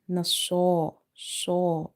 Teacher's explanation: Sod is from musta'aliya letter, so we have to make it heavy. Nasa, saw. If you say Nasara, it will replace itself with the letter Seen.